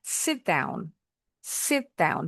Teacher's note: Huruf T-nya jangan dituntasin bunyinya. Sit down. Dideketin ke bunyi D-nya.